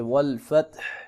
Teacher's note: ہا کو نکالیں گے، ہا کو لازمی پڑھیں گے، بعض اوقات لوگ والفت پڑھ دیتے ہیں